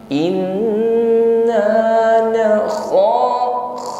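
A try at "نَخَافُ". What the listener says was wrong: kho, huruf kho isti'la tebal, kho kho ada dengkuran ya, halus tapi nge, tidak perlu ditekan terlalu, bukan na kho ya, lembut saja na kho.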